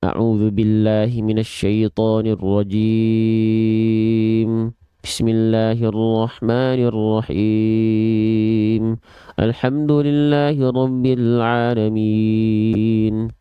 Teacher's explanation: Dia kurang jelas artikulasinya, mana vokal A, mana vokal I, mana vokal U. Maka perlu disempurnakan pelafalannya lebih jelas.